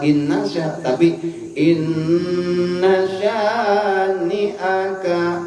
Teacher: setiap nun bertasdid gunnah itu digentak ditahan dulu, jangan langsung dilepas